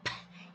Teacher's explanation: Então, eu observo que isso é uma consoante, que ela é bilabial, porque ao falar bate um lábio no outro. Ela é surda, porque nós não temos a vibração das cordas vocais.